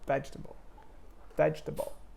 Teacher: of that it's there's a rhythm to it like vegetable vegetable you stress the first syllable